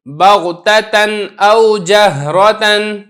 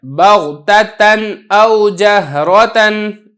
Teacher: نون تنوین ہے، اس کے اوپر 2 زبر ہے، اس کے بعد آگے حمزہ آ گیا، تو میں نے اس کو خوب ظاہر کر کے پڑھا ہے